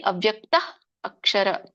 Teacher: ಒಂದು ಸರ್ಪದ ಶಿಶು ಎಷ್ಟು ಹುಸ್ ಮಾಡುತ್ತೋ ಹ ಹೇಳುತ್ತೋ ಅಷ್ಟು ಮಾತ್ರ ನಾವು ಹ ಹೇಳಬೇಕು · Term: ವಿಸರ್ಗ